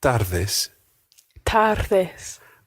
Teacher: tardes is one of these slightly tricky Spanish words. It's got a rolled R in there.